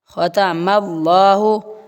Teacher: ختم اللہ میم کو لام کے ساتھ ملا کر موٹا کرنا ہے